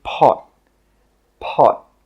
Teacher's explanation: When we say this word, we stop the air with the final T sound.